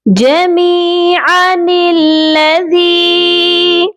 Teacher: پھر سے دیکھ لیجئے، جمیعا الذی، عین کو کھینچنے کی آپ نے غلطی نہیں کرنی، اور اس نون کو لام مشدد کے ساتھ ملا کر پڑھیں گے